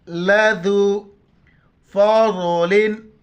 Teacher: ज़ात को मोटा करके पढ़ेंगे